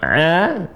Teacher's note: Sebenarnya dia keluar di tenggorokan tenggorokan tengah. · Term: ain